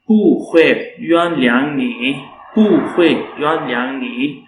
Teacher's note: when pu comes with another syllable that is having the fourth tone, so then the fourth tone on the pu becomes a rising tone